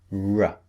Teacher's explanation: the second sound R the lips pushed out and the tongue curled back